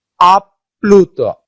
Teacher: দুইটা কিন্তু প উচ্চারিত হচ্ছে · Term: দ্বিত্ব